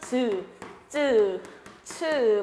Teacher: 세 번째로 파열 플러스 마찰인 파찰음이 있습니다